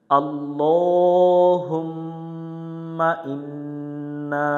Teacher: জবরের বামে খালি আলিফ আছে, এক আলিফ টান দিয়ে পড়তে হবে। এখানে এক লেখা থেকে এক আলিফ টান দিব।